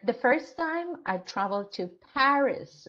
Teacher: I put stress on Paris